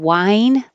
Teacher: wine with an h and wine without the H sound exactly the same